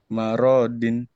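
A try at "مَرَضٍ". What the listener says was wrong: Nggak ada yang panjang, nggak ada yang panjang. Maurodin, Maurodin.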